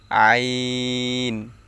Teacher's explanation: আইন হচ্ছে হলকের মধ্যখান ঐতে উচ্চারণ হবে